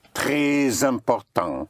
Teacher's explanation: The S at the end of a word may be pushed over to the following word if the following word starts with a vowel and it takes on the sound of a Z